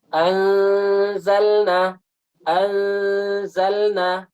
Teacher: di depannya ada huruf z maka gunah dibaca tipis